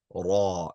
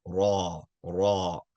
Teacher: you curve the sides of your tongue. Raw. And you elevate the rear. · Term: heavy sound